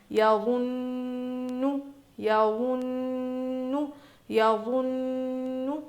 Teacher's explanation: غا heavy letter ہے, مستعلیہ ہے, موٹا پڑھیں گے